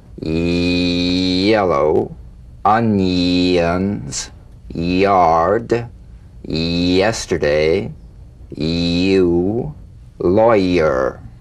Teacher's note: Y buzz quickly cut off as it slides into the following vowel. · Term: resonant Y